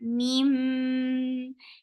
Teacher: Meme will get sifa of punna. You're keeping the sound in your nose for a longer time. Meme. And then it is 2 counts long.